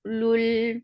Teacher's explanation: for Dhamma circle ellipse, attach with lam, lam will get sifa of tawassut